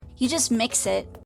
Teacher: la locutrice se souvient précisément et facilement de cette étape et l'énonce donc avec un ton définitif, d'où l'intonation descendante.